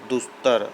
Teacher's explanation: जो विसर्ग है ना वह स में बदल जाएगा, दुस्तर। अब यहाँ देखें एक शब्द छूट गया है, दुह धन साहस, दुस्साहस। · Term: विसर्ग का स में परिवर्तन